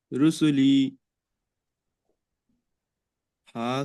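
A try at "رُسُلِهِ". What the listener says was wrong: লি টান হয়ে যাচ্ছে ভাই। রসুলিহি, হিটা শুধু টান হবে, বাকি কোনো জায়গায় টান নেই, সব হারাকাত।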